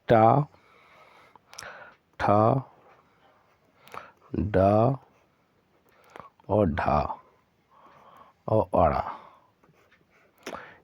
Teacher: ड का उच्चारण स्थान होता है मुर्धन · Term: मूर्धन्य